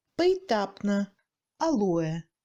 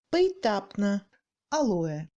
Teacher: On entend plutôt le I à la place de E.